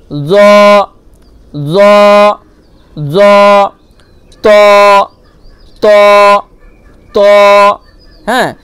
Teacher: জ এবং ত উচ্চারণের সময় মুখ একটু গোল করে আওয়াজ মোটা করতে হবে।